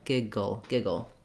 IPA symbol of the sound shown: əl